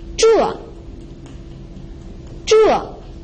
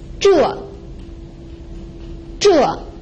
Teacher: the fourth tone is a falling tone.